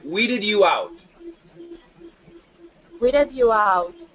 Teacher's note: and we get that where is it here we get that D plus y together we can get the J sound